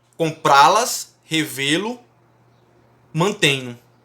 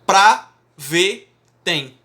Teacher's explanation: a sílaba tônica ela recai na última sílaba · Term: verbos oxítonos